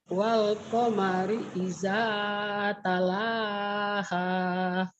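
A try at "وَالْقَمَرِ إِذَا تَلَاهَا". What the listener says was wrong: Wal qamari idza talaha. Hati-hati jangan talahah tuh, ada sedikit talahah ya. Talaha. Wal qamari idza talaha.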